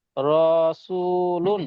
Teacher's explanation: ওয়াও সাকিনের ডান দিকে পেশ আছে, পেশটাকে ওয়াও মাদ্দা বলা হয়, এক আলিফ টান দিয়ে পড়তে হয়। লামের উপরে দু পেশ আছে, দু লামের পেশটাকে উপরে দু ওয়াউলিং পেশ বলা হয়। · সিনের উপরে পেশ আছে, পেশটা আছে হারাকাত, হারাকাতে পড়া তাড়াতাড়ি পড়তে হয়, টান দেওয়া নিষেধ।